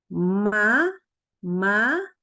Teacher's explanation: huruf mim itu juga keluar dari rongga hidung jadi setengahnya dari bibir setengahnya dari rongga hidung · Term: huruf ghunnah